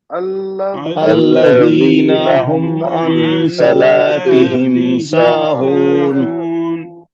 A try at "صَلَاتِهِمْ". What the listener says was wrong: صاد کو موٹا پڑھیے. لام کو بھی موٹا نہیں پڑھنا, باریک پڑھنا ہے. جیسے فذالک الذی والا لام باریک پڑھا ویسے صلاتہم پہ لام باریک پڑھیں گے. صاد کو موٹا پڑھیں گے مگر لام کو باریک پڑھیں گے.